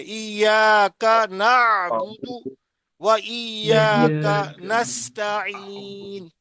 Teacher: نعبد پہ زور دے دیں بس ایاک پورا پڑھتے